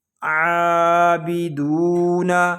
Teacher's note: دال کو ہم ایک الف تک کھینچ کر پڑھیں گے کیونکہ یہاں پہ واو مدہ ہو رہا ہے